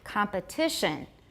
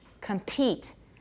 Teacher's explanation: much aspiration rather no stress not so much aspiration but compete more aspiration in the stressed syllables